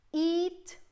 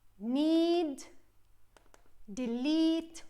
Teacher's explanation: it's a long sound okay and it's a sound I produced by pulling my lips and keeping my jewel in this position and it's e like